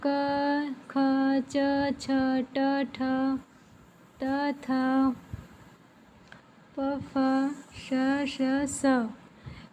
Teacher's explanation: जिनके उच्चारण से स्वर तंत्र में कंपन नहीं होता है उसको हम अघोष व्यंजन कहते हैं